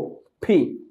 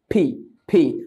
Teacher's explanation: ফি দুই ঠোঁট বন্ধ করে একটা বাতাস বের হবে, এটাকে বলে অ্যাসপাইরেটেড সাউন্ড